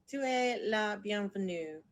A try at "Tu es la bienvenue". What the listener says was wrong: You said it perfectly.